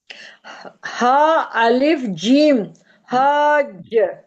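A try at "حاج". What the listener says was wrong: जबर छोड़ दिया। जीम, गलत हिज्जे कर रही है ना, पहले हुरूफ का नाम लेना, हाँ अलिफ फिर जीम फिर जबर। हज नहीं, हाज। खींचने में कंजूसी नहीं करनी, कोई चार्जेस नहीं है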